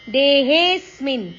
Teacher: ದೇಹೆ ಹೇ ದೀರ್ಘ ಅಕ್ಷರ ಅದರ ಮೇಲೆ ಆಘಾತ